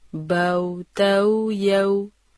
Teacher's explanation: واؤلین کی ادائیگی بغیر لمبا کیے اور ہونٹوں کے درمیانی سوراخ کی گولائی کم سے کم رکھتے ہوئے کی جاتی ہے، جیسے بو تو یو۔